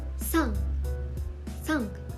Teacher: It is pronounced with more tension, similar to a sharp S sound